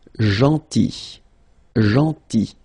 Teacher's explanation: Then gentil. So remember this final L is not pronounced